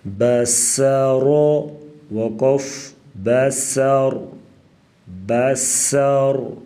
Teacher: با زبر ب، سین زبر س، بس، را زبر را، را کے اوپر زبر تو را کو پر پڑھیں گے، سین سختی سے، سیٹی جیسی آواز